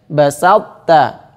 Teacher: Basalta dimasukkan dengan cara menghilangkan qalqalahnya.